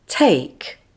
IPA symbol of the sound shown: eɪ